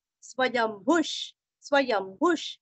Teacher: य के ऊपर आघात, आधा म भू दीर्घ और विसर्ग का उच्चारण आधा श